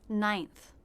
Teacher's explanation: This begins with the N consonant sound. The flat top part of the tongue is up at the roof of the mouth. Then we have the I as in by diphthong.